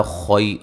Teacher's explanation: خو کو موٹا ادا کریں گے